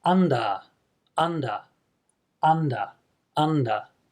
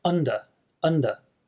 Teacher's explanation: the tongue is much more relaxed and central in the English pronunciation